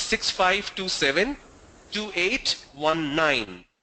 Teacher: So you say the number is 6527-2819. When you raise your tone a little bit on the last syllable or the last unit, that information is heard very clearly.